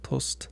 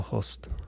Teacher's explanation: That's because the word that comes just before it is the masculine possessive adjective and that lenites the next noun. So instead of being a tust, it's a hust.